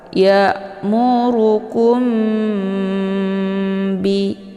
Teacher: karena dia mim dengan ba Ini adalah sama-sama huruf bibir jadi untuk bacaannya ini didengungkan Ya ditahan lebih kurang dua harakat sehingga terbentuk suara yang mendengung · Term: Ikhfa Syafawi